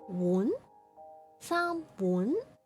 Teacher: The second tone, the rising tone, has an intonation similar to that used in English to indicate a question. So it's like, huh?